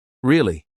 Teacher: But if I say it with falling intonation, really, it sounds serious, like I'm confirming a fact.